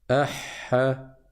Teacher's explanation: on reste appuyé sur le ha 2 fois plus de temps avant de passer à la fatha